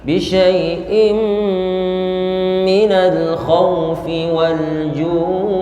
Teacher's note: dia mad arid li sukun, jadi dipanjangkan karena kita berhenti di situ, maka panjangnya 4 harokat. Karena kita dari awal ambil 4 harokat, maka ketika ju berhenti bacanya 4 harokat.